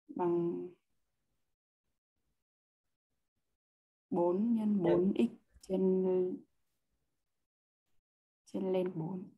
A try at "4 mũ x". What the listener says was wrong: Đọc là 4 mũ x nhá, đừng đọc 4 x.